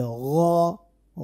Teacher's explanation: বাংলায় যে গ আছে না, গ, ওই গ কে একটু মোটা করে বলতে হবে গ গ, তাহলে গইন হয়ে যাবে।